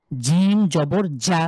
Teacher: জিম, আপনি যখন জিম উচ্চারণ করবেন, জিভের মাঝখান আপনি খুঁজে বের করেন, জিভের মাঝখান তালুর সাথে একদম লক করে ফেলবেন। জিম, আপনি যত শক্তি আছে আপনি চাপ দিয়ে উচ্চারণ করতে পারেন।